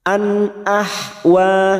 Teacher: ha kita lembutkan, jangan samakan dengan kha. Ha lebih lembut.